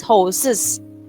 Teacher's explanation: The third case, it is horse. Already it ends with a sir sound. So you can't have sir, another sir along with it. So you insert a vowel. Since vowel is a voiced sound, you can't again have another s.